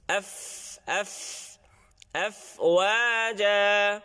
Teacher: ফার মধ্যে উপরের দাঁতটা নিচের ঠোঁটের সাথে লাগতে হবে